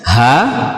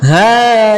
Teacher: ini fathah panjang cukup 1 ayunan atau 2 harokat saja